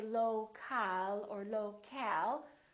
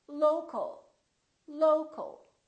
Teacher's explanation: syllable here low low but we don't say local or local we reduce the second syllable and it becomes the uh